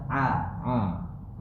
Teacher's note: a masih keluar dari hidung